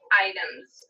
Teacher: The word item ends with the sound which is voiced. So I'm going to say items with a Z ending for the S.